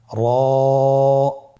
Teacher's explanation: র হরফটি এখানে আমরা পোর করে উচ্চারণ করব, মোটা করে উচ্চারণ করব, এবং র হরফটি এক আলিফ টেনে পড়ব।